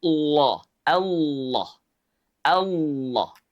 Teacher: Lafaz Allah jika didahului oleh dua tanda baca tadi, fathah domamah, maka lafaz Allah dibaca tafkhim, tebal. Lafaz Allah dibaca tebal dengan cara mengangkat pangkal lidah kita ke langit-langit.